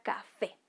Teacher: la sílaba tónica de esta palabra es fe